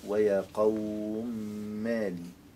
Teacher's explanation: لا خلاف عن السوسي في إدغام الميم